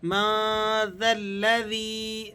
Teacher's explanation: ذال کو لام سے ملا دینا ہے، اور یہ جو دو الف بیچ میں آپ کو نظر آ رہے ہیں یہ دونوں آپ نے سائلنٹ کر دینے ہیں